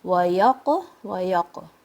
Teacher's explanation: There's a qalqala here. The qaf is heavy.